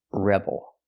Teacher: put the stress on the first syllable, rebel.